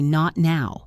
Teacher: We hold the t and go straight into the n. This creates that seamless flow we are looking for. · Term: held t